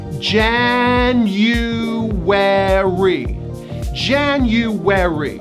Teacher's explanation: There are 4 syllables, and the first syllable gets the stress. There's a hidden Y and a hidden W.